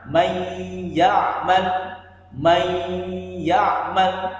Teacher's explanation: Bunyi daripada nun sukunnya tidak terdengar dengan jelas tapi dimasukkan ke dalam huruf setelah nun sukunnya itu huruf ya. Menjadi may ya'mal. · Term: idgham bigunnah